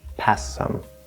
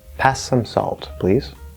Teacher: So we want to sort of lengthen that S